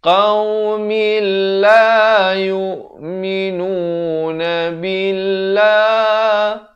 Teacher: Di sini idgham bila ghunnah. Daripada qaumin jadi qaumil.